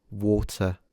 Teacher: I don't pronounce the R at the end. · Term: non-rhoticism